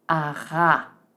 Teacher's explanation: we're going to say aga again, but with a scraping sound just as aga, ara.